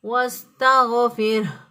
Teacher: غین جو ہے یہ ادنی حلق سے ادا ہوگا، یعنی گلے کا وہ حصہ جو کہ منہ کی طرف ہوتا ہے، وہاں سے غین ادا ہوگا، واستغفر۔